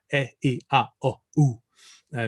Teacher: Here, the vowels are all pure.